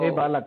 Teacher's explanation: संबुद्धि के हल्का लोप हो जाता है, तो विसर्ग वगैरह कुछ भी सुनाई नहीं देगा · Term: बिना विसर्ग वाला